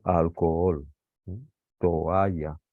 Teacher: dos vocales abiertas juntas, no las tenemos que pronunciar en la misma sílaba, sino que las tenemos que separar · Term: hiato